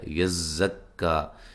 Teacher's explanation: یزکا، یا کو زا سے، زا کو کاف سے ملانا ہے، اور زا پہ سیٹی کی آواز آنی ہے، سختی کے ساتھ اس کو پڑھنا ہے۔ یزکا، یہاں بھی جب وقف کریں گے تو ایک الف کی مقدار کے برابر پڑھیں گے، جب ملا کے پڑھیں گے تو پھر یہ مد ہوگی مد جائز۔